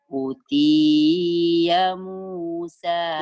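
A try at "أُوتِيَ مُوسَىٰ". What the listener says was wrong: bukan U-nya panjang. Utia Musa wa Isa. Pendek ya-nya. Utia Musa wa Isa.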